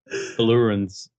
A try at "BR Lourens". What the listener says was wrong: No, it's not blue. It's BR Lourens. BR Lourens.